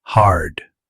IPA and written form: hɑːrd (Hard)